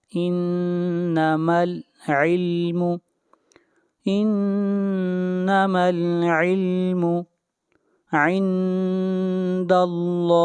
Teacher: یہاں پر لفظ اللہ کو موٹا پڑھا جائے گا، اس لیے کہ لفظ اللہ سے پہلے زبر ہے